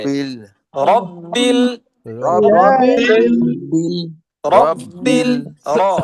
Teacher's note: রব্বিল রটাকে টাস করে ভারী দিতে হবে।